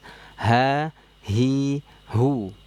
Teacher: pita suaranya melebar, terbuka ya. Mengalir karena dia punya sifat rikhwah. Jadi ha itu nanti nggak boleh keluarnya dari dada ya.